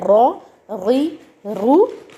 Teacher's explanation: जो ऊपर के दो दांत हैं उनके पीछे जो मसूड़े हैं वहां लगते ही अर र की फील आती है।